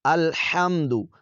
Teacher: ہا کو حلق کے درمیانی حصے سے ادا کریں گے